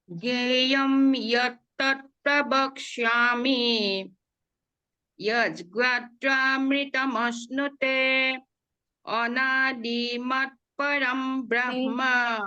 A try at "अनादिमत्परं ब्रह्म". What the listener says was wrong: दी पे ज्यादा मत रुकिए, ह्रस्व है।